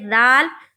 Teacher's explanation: दाल जब हम अदा करते हैं दाल, तो ऊपर के जो दांत हैं और नीचे के जो दांत हैं, दोनों दांतों के बीच हमारा ज़बान होता है और थोड़ा सा निकला हुआ होता है, और हम मुंह खोलते हैं।